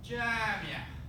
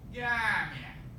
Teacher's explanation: The sound this letter makes in modern standard Arabic is a J, like in the gym or jeep, except in Egypt. In Egypt, it's a hard G sound, right? As in like garage or any other hard G, goat or something like that, okay?